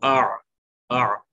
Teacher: یہ درمیانی حلق سے ادا ہو رہا ہے، مڈل آف دا تھروٹ